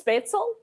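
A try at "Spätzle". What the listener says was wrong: The A isn't quite pronounced like an A, but close enough.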